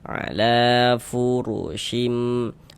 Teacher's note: Huruf ro memiliki harokat dhammah. Ini huruf ro dibaca tabkhim, dibaca tebal,